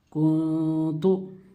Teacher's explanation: نون کی آواز کو ناک میں چھپا رہا ہوں, کس لیے چھپا رہا ہوں کہ حروف اخفا میں سے کاف آ کر ہے.